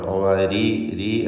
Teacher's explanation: ആദ്യത്തെ റായ് സ്വാഭാവികമായും തർക്കീഖാണ്, കാരണം അതിന് കസ്റാണല്ലോ.